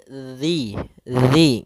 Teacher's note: makhrajnya adalah ujung lidah kita menempel dengan gigi seri atas, sehingga atau bisa kita gigit sedikit zi gitu ya. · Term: huruf zal